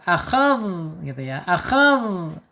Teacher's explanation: dzal secara sifat ada di arkhawah. Arkhawah itu mengalirnya suara.